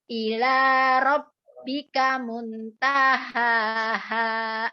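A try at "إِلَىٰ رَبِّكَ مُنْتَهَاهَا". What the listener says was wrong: Ikhfanya ditahan lagi gunahnya. Muntaha.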